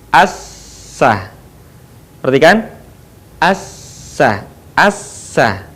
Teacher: Ketika kita melafalkan huruf sin, maka posisi lidah kita ada di bawah.